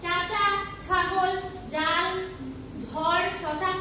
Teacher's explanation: যেসব ব্যঞ্জন ধ্বনি উচ্চারণের সময় জিভের ডগা খানিকটা প্রসারিত হয়ে শক্ত তালুর কাছে বায়ু পথে বাধা সৃষ্টি করে সেগুলোকে তালব্য ব্যঞ্জন বলে